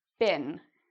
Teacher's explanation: It's pronounced like been. I hear many students say being, where they try to make it a long E, but it's more like been. Okay, so it's a bit shorter.